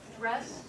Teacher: So the same kind of thing with the dr cluster, it sounds similar to j.